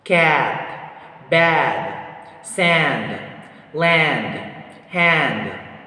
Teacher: Next one, we have here IPA vowel sounds ah, ah, ah. The muscular tension of this vowel sound is lax. The tongue height is low. The tongue advancement of this vowel sound is front, and the lip shape is unrounded.